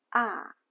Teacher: The third tone starts low and then rises, but mostly it sounds like a short low tone, ah, ah. The fourth tone is a falling pitch, ah. In Chinese, the same syllable with different tones can have different meanings.